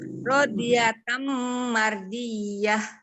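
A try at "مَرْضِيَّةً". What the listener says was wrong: Mar tebal. Mar. Coba.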